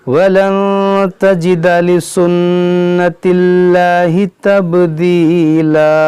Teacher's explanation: یہ تبدیلا 2 زبر کو الف سے بدلیں گے